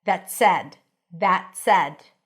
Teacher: So you don't really hear the T. It's like that said. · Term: held T